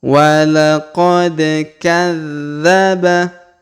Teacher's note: huruf dza berharakat tasdid maka kita tahan dan kita tekan pada huruf dza